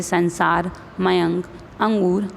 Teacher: प्रत्येक वर्ग का पांचवा वर्ण नासिक कि व्यंजन है अर्थात इसका उच्चारण नाक से किया जाता है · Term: अनुस्वार